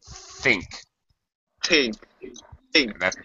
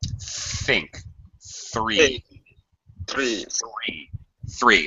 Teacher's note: it's unvoiced so just the air